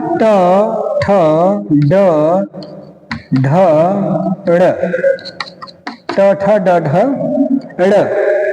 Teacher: ये मुर्धा को स्पर्श करने का काम करते हैं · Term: मुर्धन